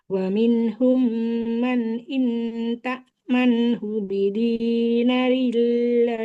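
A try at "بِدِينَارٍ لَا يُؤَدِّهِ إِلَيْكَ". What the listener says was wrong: bidina. Nunnya panjang. Bidinarillah. Bidinarillah. Lamnya juga panjang.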